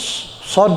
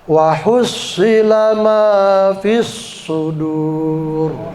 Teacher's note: mulutnya monyong, makhraj sod itu